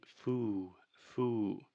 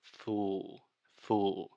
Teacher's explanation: correct pronunciation is full full this is a very difficult sound this final L sound in linguistics many times we call this the dark L